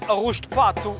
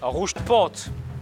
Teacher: Um A que vai para trás, que velariza, já pode ser mais ou menos velarizado